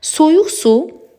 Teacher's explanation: soyuq suda da Q-nı biz X kimi tələffüz edirik